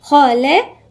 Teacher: الذي، الذال هنا من الحروف اللثوية. خلق، الخاء مفخمة واللام مرققة والقاف مفخمة.